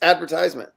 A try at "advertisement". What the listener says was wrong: You're putting the wrong emphasis on the wrong syllable. Advertisement. Like even his chin lifts up when he says he's like advertisement.